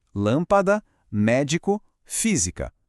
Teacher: Em todas elas, a sílaba tônica é a antepenúltima. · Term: proparoxítona